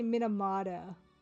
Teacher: I say Minamada because Canadians slur their T's.